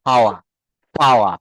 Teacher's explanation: ইউকে এক্সেন্টে যদি আমরা বলি শেষের আর বা রটা অনুচ্চারিত থাকে